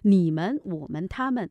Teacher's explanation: 因为我们的门字呢要读轻声的